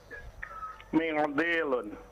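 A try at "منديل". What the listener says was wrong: nah. Tidak usah diikhfa. Mendilun biasa saja.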